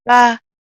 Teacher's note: the tongue is in a rest position no part of the tongue is up you know the back of the tongue is not up it's